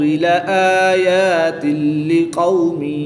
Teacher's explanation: تنوین کے بعد لام حروف یرملون میں سے ہے تو یہاں پر ادغام بلا غنہ ہوگا